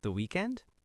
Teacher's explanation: You were literally just repeating the topic but with a slight question tone at the end. The pitch of your voice goes up just a tiny bit.